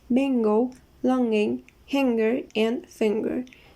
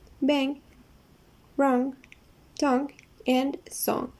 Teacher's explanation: way up the soft palate the tongue tip is forward also the air comes up through the nasal passage and then vibration takes place in the nose · the back part of the tongue stretches all the way up the soft palate. The tongue tip is forward. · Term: ng sound